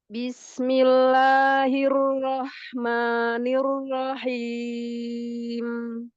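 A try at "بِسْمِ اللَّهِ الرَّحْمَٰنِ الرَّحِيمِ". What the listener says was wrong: Lagi ro-nya tebalkan. Ar-Rahmani.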